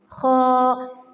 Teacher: پہلے منہ کھولنا ہے پورا، آ جیسے ہم کرتے ہیں آ، پھر پڑھنا ہے حا، حا، خا۔ حلق کے پہلے حصے سے خا پڑھتے ہیں